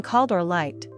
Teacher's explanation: But in called or liked, the ending blends into the word and doesn't sound like call-ed or like-ed